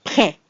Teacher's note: we have our P, which is rather dry, not a lot of air. We have our R, which of course is coming from the back of the throat.